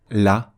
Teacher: le LaM va être prononcé avec la langue plate qui est la position naturelle pour prononcer un Lam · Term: avec légèreté